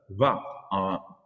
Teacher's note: Since the voice glottal fricative phoneme ha is often deleted in Tamashaq, we may assume that this phytonym comes from an etymological ha and is not the evolution of Proto-Amazigh za, but of va, bilabial fricative, voiced fricative